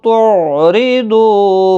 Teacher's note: برابر واو کو کھینچ کر پڑھنا ہے، او واولین ہے، تعریدو را زیر کی وجہ سے باریک ہوگا